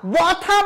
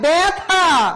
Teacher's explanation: জফলার পরবর্তী ব্যঞ্জনের সাথে যদি অ অথবা আ থাকে তাহলে তার উচ্চারণ এ হবে।